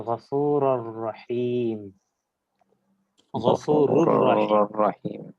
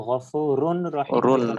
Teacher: তানবিনের নুন কিংবা নুন সাকিনটা উচ্চারিত হচ্ছে না বরং পরের যে বর্ণটা আছে ওটাই দুইবার উচ্চারিত হচ্ছে